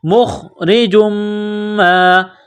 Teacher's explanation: جس طرح انسان گلے سے بلغم نکالتا ہے اسی طرح اس خا کو نکالیں گے · را کے نیچے زیر ہے تو را کو باریک کرنا ہے